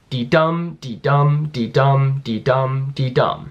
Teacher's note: dee-dum dee-dum dee-dum dee-dum dee-dum so there you can see that the second syllable is always the one that's stressed